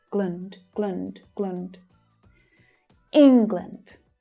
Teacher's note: Notice how the second syllable reduces to the schwa.